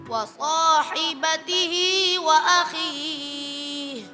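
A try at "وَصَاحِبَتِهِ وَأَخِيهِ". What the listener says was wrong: Ya, huruf H ketika di akhir ya itu jangan Jadi sampai yang seharusnya keluarnya dari aqsal halq, dari bagian bawah tenggorokan itu turunnya ke dada.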